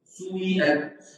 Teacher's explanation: الإشمام هو أن يبدأ في هذه أن تبدأ بالضم، يعني تقول سيئة تقول عنها سويئة تبدأ بها ضمة خفيفة مختلسة تنكسر